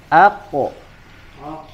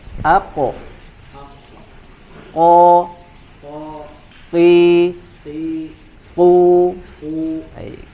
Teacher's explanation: huruf qaf ini dia adalah bagiannya pangkal lidah ditempelkan atau menempel dengan langit-langit bagian lunaknya, ya, yang terbentuk atau ya dari unsur daging, ya, bagian yang lunak, ya.